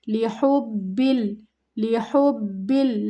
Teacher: لِحُبِّل، لِحُبِّل، لام کو نہیں کھینچنا، ہا کو با کے ساتھ ملانا ہے، مضبوطی کے ساتھ، سختی کے ساتھ